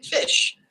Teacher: frickative sounds like the English F in fish the mechanism involves placing the lower lip close to the upper teeth air is forced through this small Gap creating a turbulent air flow